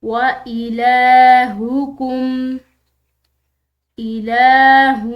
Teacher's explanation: وَإِلَٰهُكُمْ، ہاں موٹی پڑھی جائے گی، لام کے اوپر کھڑی زبر ہے تو اس لام کو ہم نے ایک الف کی مقدار کھینچ کر پڑھنا ہے